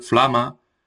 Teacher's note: el alto aragonés conserva como el catalán CL, FL y PL